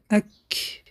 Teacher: قفای زبان به بالا برداشته می شود، به قسم نرمی و سختی کام می رسد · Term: حرف کف